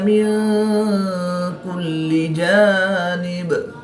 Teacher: دو زیر کی تنوین کو وقف کی حالت میں ساکن کر کے پڑھیں گے